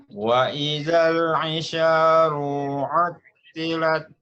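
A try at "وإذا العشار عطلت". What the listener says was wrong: Isyaru, lu-nya juga pendek.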